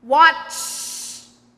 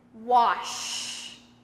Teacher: Watch has a t in the middle of it. So, your tongue goes all the way up and it stays up there when you make the chh sound.